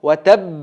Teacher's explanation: watab deb a tashdid bilan birgalikda qalqala qilamiz.